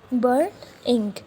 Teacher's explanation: burn is stressed and ink is unstressed